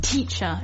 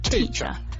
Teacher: You want to really make sure that that T sound is there, but it's not a very hard T that you spit out. It's like a sort of light T. So it's not like teacher, it's just teacher.